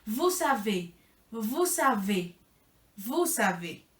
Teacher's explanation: Aquí hay dos Vs y hay una aleación. Por eso también se pronuncia la S del final.